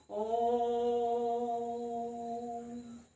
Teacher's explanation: ये ओम शब्द जो आ रहा है ये प्लुत स्वर में आ रहा है